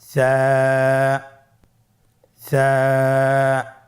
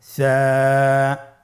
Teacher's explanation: সা হরফটির মাখরাজ হলো উচ্চারণের স্থান জিহ্বার আগা সামনের উপরের 2 দাঁতের আগার সঙ্গে লাগিয়ে উচ্চারিত হয়।